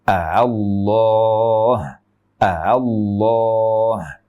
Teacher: hamzah yang pertama dibaca jelas sebagai hamzah murni, A, dan yang kedua dibaca A. · Jadi bunyinya bukan hamzah murni, tetapi juga bukan alif murni. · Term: tashil